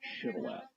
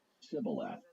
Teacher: In Gilead, people pronounce this word with a sh sound on the front of it. · But in Ephraim, they didn't say the word with the aspirated initial sound, and so they just used an S sound and said it Sibboleth.